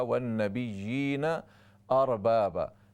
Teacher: دو زبر پر اس کو الف سے ہم بدلیں گے، وقف بالابدال ہوگا